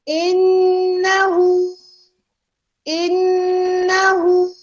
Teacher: बिहम्दी रब्बिका वस्तगफिर, बिहम्दिका sorry बिहम्दी रब्बिका वस्तगफिर, इन्नहु, इन्नहु, इन क्या है, हुरूफ मुशद्दद में से आ गया, नून जो है हुरूफ मुशद्दद में है तो फिर हमारा क्या हो जाएगा, गुन्ना स्ट्रॉन्ग हो जाएगा